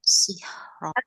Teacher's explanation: Tapi kalau kita nyala wasol atau dilanjut, ini baca ro-nya tebal ya, karena fathah